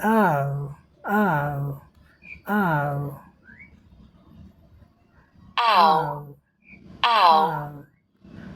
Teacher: यह एक लंबी ध्वनि है और डायग्राम में देखो, सुनो उसके बाद ध्वनि का उच्चारण करो। यह अ से उ की तरफ जाती है।